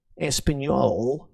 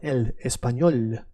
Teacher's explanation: It just means that you changed the way you put your tongue when you say the letter L is not a thick L. It's a is a soft L.